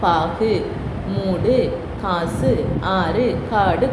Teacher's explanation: அந்த உகரம் தனக்குரிய ஒரு மாத்திரையில் இருந்து அரை மாத்திரையாக குறைந்து ஒழிப்பதுதான் குற்றியல் உகரம் அப்படின்னு சொல்றோம்.